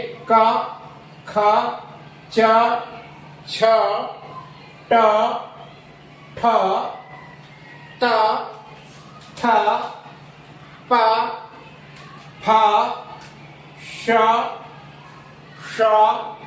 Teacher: जब इन ध्वनियों का हम उच्चारण करेंगे तो हमारी स्वर तंत्रियों में यानी स्वास बाहर निकलती है तो उसमें कंपन पैदा नहीं होता है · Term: अघोष ध्वनियां